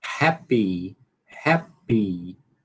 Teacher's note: Termina no P e depois é que solta o I.